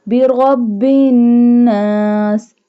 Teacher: When ra have fatha sign, we bold it. So this one ra will be bold, and we do gunna on noon because noon has tashdid sign.